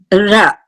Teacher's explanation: When we pronounce the R sound, what happens is, it's a retroflex sound, as we all know. It's back of our teeth.